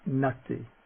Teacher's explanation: The tongue is pressed against the teeth when forming the word. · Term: dental nasal